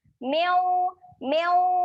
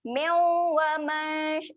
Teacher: Dengung sedia nak sebut huruf waw. Jadi dengung kita tu dah siap-siap nak muncung. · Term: bacaan dengung